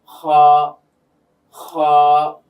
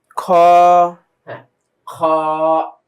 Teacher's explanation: হলকের শেষ ভাগ থেকে এই খ এর উচ্চারণটা বের হবে।